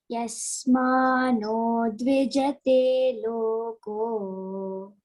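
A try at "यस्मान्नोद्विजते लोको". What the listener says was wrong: See, Yasman no, N-N-O. See, English transliteration, you can see double N. That means you have to say Yasman no dvijate loko.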